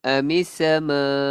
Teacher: Sama, perkataan sama panjangnya berapa harakat? 4 ataupun 5 harakat.